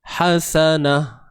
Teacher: Tapi kalau kita berhenti, hasanah, nampak tak? Berubah daripada bunyi ta yang asal tadi jadi kepada huruf ha, dan ianya berlaku ketika berhenti sahaja, dan ianya berlaku pada ta yang berbentuk begini sahaja. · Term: ta marbutah